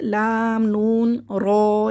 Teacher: لام نون رو، یہ طرف اللسان یعنی کہ ہماری جو زبان کے جو کنارے ہیں، یہ والے جو زبان کے کنارے ہیں، یہ اوپر زبان کے منہ کے اندر جو ہمارا گوشت جو ابھرا ہوا ہے وہاں پہ لگتی ہے، تو یہ لام نون رو یہ ادا ہوتے ہیں طرف اللسان سے